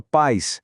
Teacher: O a continua sendo o som forte, a vogal, mas o i fica fraquinho, vira uma semivogal. Eles coabitam a mesma sílaba em pais, formando um ditongo.